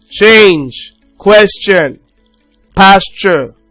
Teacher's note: Then we have ch. So it's a voiceless post-alveolar affricative consonant sound.